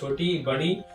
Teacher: तालु से निकलता है छोटी इ बड़ी ई